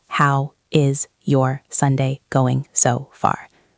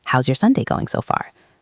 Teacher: The word how and the word is join together to become how's. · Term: link the words together